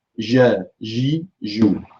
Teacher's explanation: j has an element of tafashi as well, because the sound spreads throughout the mouth.